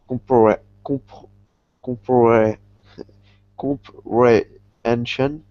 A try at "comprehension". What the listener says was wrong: Yeah.